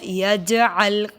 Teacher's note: جیم پہ کلکلا ہوگا